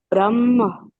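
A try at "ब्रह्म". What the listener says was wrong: Brahma. Can you feel the drop in the ha? I'm not really hearing the ha.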